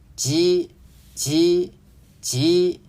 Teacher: 萧山话鸡声母的发音类似普通话的鸡，但是是一个浊音